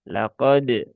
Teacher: di sini lam tipis ya. Qafnya ada isti'la. Laqo ko. Tetapi isti'lanya jangan sampai berlebihan menjadi laqo.